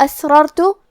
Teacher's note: دونوں را کا حکم ہے تفخیم، تو ہم یہ دونوں را کو موٹی آواز میں پڑھیں گے۔